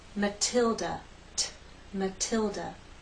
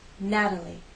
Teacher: We have a true T in Matilda.